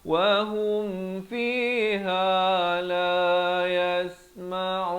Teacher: Ha pada dhammah bunyi hu bukan ho